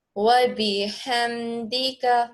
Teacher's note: ہا حلق کے درمیان سے ادا کریے